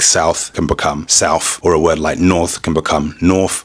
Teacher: th at the end of a word can turn into an f.